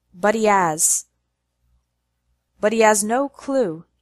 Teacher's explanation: the words but he has run together so that they sound like one word